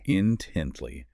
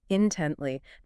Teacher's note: Three syllables. Stress on the second. Intently. This means with earnest and eager attention.